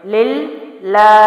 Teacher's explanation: للہ، لام کے نیچے زیر ہے تو اللہ کے لام کے پیچھے حرف پر یا اس کے لام کے نیچے ہی زیر ہو تو اللہ کے لام باریک پڑے جاتے ہیں۔ للہ، لام کو لام سے ملائیں گے کیونکہ تشدید ہے، اور کھڑا زبر ہے تو ایک الف کے برابر اس کو لام کو لمبا کریں گے